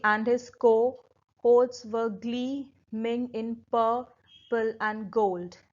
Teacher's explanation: there are 2 unstressed syllable, then a stress syllable, 2 unstressed, stressed, 2 unstressed, stressed, 2 unstressed and then a stress syllable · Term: anapestic tetrameter